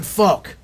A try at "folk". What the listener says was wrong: when you said folk, it kind of sounded like you said fuck.